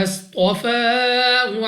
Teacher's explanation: صاد مستعلیہ میں سے ہے، موٹا پڑھنا ہے